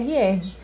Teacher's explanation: som que sai lá do fundo da garganta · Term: forte